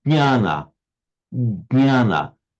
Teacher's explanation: you put your tongue as if you're going to say j, but don't finish with the j bit, go straight to the nya.